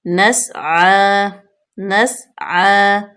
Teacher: سین جو ہے اس پہ سیٹی کی آواز آئے گی اور عین پہ فتح اشبائی، اس کو کھینچیں گے